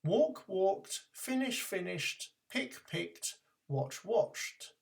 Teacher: If the base form ends in an unvoiced sound other than t, to make the past, add a t sound